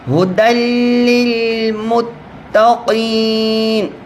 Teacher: یرملون آپ کو 6 حرف بتائے تھے نا، دو حرف ہیں، ان میں سے لام اور را، اس کے اوپر غنہ نہیں ہوتا، ادغام ہوتا ہے، یعنی دال کو ہم لام سے ملائیں گے، ملا دیں گے لیکن غننے کے بغیر